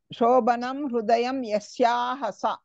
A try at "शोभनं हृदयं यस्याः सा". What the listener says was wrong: शोभनम् इति न वदतु शोभनम् इत्येव वदतु भकारस्य महाप्राणत्वं किञ्चित् साधयतु